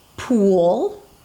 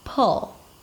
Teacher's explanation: Pool, tense and long. Pull, relaxed, open.